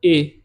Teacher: ए का उच्चारण करने के लिए कंठ और तालु दोनों से हवा टकराएगी। इसका मतलब आप ये कह सकते हो कि ये जो ए है ये कंठ तालव्य, उच्चारण स्थान इसका क्या होगा, कंठ तालव्य।